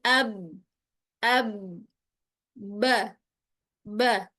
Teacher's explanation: Penyebab terputusnya aliran suara pada huruf ba pun sama, yaitu karena terkatupnya kedua bibir. Tidak ada celah untuk mengalirnya suara keluar.